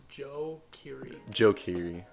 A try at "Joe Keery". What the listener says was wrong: It's not Joey. It's Joe.